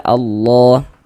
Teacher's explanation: Ah maka karena ini di sini adalah ada lafaz Allah sebelum lafaz Allah sebelah sininya ada harakat fathah ada tanda baca fathah ya. Maka lafaz allahnya huruf lam jalalahnya dibaca tabkhim dibaca tebal seperti itu. Sehingga kita baca Allah.